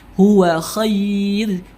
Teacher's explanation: Ada ra, sebelumnya ada huruf iya sukun, maka dia tetap dibaca tipis tarqiq ya.